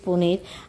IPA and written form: pani̯r (panir)